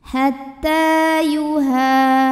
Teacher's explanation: Hatta yuha, ha mad tabi'i dhahiri, karena ada alif sebelumnya fathah, maka huruf ha panjang 2 harokat